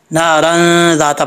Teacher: जब मिला के पढ़ेंगे तो अलिफ ख़त्म हो जाएगा, पढ़ा ही नहीं जाएगा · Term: गुना